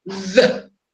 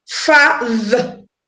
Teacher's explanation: when making the hard sound, there will be a vibration on your vocal cord